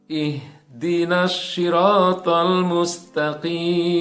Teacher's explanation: bukan hak tipis, ya, bukan hak pedas, tapi hak yang besar, ya, yang keluarnya dari pangkal tenggorokan.